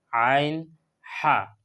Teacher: 3 নম্বর মখরজ হলো গলার মাঝখান। গলার মাঝখান থেকে আদায় করা হয় আইন এবং হা।